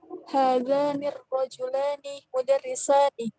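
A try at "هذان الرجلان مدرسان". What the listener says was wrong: Naam, ahsanti.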